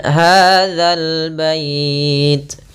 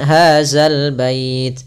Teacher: Sering terjadi kita mendengarkan huruf zal diganti dengan zai.